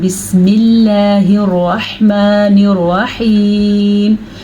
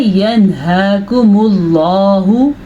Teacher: اللہ کا نام ہم نے باریکی سے پڑھا کیونکہ اللہ کے نام سے پہلے زیر تھی۔